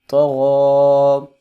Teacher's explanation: طا اور غین یہ دونوں حروف مستعلیہ میں سے ہیں، ان کو لمبا کریں گے، ان کو موٹا کر کے پڑھیں گے